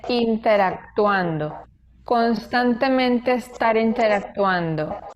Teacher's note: la D sí se oye cuando él dice interactuando